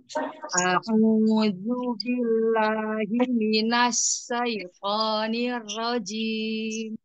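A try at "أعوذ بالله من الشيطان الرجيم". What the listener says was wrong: Bukan sin. Titik tiga. Tafashi. Ya coba latihan sinnya doa. Sya.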